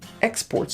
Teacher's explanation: when it's a noun the stress is on the first syllable